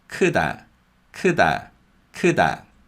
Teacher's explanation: because 디귿 comes after a vowel sound, it becomes a voiced D sound